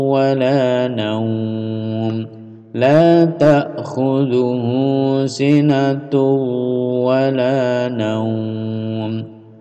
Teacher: Ada idgham di sini, bunyinya harus nasal dan ditahan.